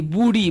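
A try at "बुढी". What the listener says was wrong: You are saying B-U-R-A. Booty. This is not B-U-D-H-I.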